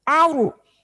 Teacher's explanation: Nah, roknya mati diangkat. Aru karena tabkhim.